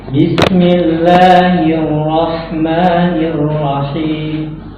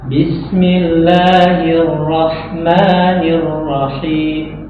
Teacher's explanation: secara huruf itu huruf harakat akhirnya itu diraumkan, dibaca, tapi kadar harakatnya itu kurang. Iya, ya, kadar harakatnya kurang.